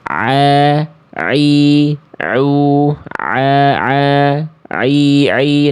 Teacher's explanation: Huruf ain dilafalkan dari tengah tenggorokan atau tenggorokan bagian pertengahan